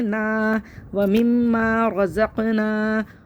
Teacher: نا کھڑا زبر ہے, ایک الف برابر کھینچیں گے